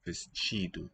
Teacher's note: palatalization, not T but chi